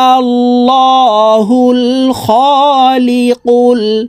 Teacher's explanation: এই লামকে লা বলা যাবে না হুয়াল্লাহুল এভাবে বলা যাবে না এই লামকে ল অর্থাৎ মোটা ভাবে পড়তে হবে